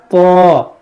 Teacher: طا دیکھیے اس کا مخرج ہے زبان کی نوک اور اوپر کا جو دانت ہوتا ہے اس کا جو جڑ, دانتوں کی جو جڑ ہے, آپ وہاں پر جب لگائیں گے زبان کی نوک کو دانتوں کی جڑ پہ, اوپر کے دانتوں پہ, تو یہ ادا ہوگا طا. محسوس کیجئے طا وا دیکھیے یہ بھی موٹا کریں گے اور اس کو بھی ہم موٹا پڑھیں گے.